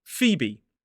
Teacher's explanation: the long /iː/ vowel sound. And then the second syllable is a b— and a shorter variant of that same /iː/ vowel sound. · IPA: /ˈfiːbi/